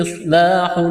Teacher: صاد کو موٹا کرنا ہے، سیٹی کی آواز پیدا کرنی ہے